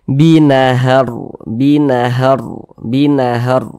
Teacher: huruf rnya pun kita baca tebal kita baca takhim sehingga pangkal lisan kita itu naik terangkat ke atas ketika Kita mengucapkannya huruf rnya itu kita tebalkan binahar binahar binahar ditebalkan seperti itu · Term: tabkhim